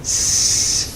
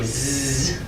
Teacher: So when you're producing each one, a s and a z are actually identical in configuration of the vocal tract, of the way that you're producing it. It's just that the z has that additional voicing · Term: voiced s